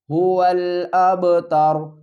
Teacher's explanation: وقف کی صورت میں را کو بھی ہم ساکن پڑھیں گے